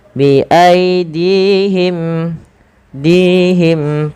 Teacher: panjangkan dinya 2 harakat karena di sini ada ya kecil